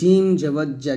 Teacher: জিব্বার উপর, জিব্বার মধ্যখান তার বরাবর উপর তালুর সঙ্গে লাগবে